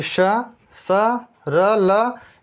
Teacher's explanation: श, स, र, ल, इनका उच्चारण दंतमूल से होता है, वर्त कहते हैं इसको।